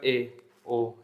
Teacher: अर्ध सम्रत होता है तो सम्रत से थोड़ा ज्यादा खुलेगा